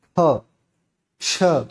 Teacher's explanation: वहीं पर हम महाप्राण की जब चर्चा करते हैं तो महाप्राण के अंतर्गत मुख से उच्चारण करते समय बहुत ही अधिक मात्रा में जो है वायु बाहर की तरफ निकलती है